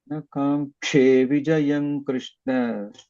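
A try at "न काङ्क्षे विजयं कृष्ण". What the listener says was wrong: it is coming as Mahaprana.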